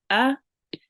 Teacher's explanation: alif with the fatha is just alif maftuh, 1 count